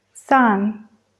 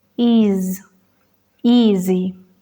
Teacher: sonidos son alveolares y fricativas la s es sorda y la z Sonora ambas tienen la misma posición bucal